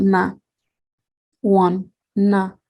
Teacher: So we can see that N is triggering the nasalization of A